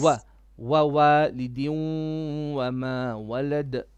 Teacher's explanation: Din idgham with ghunna, 2 beats.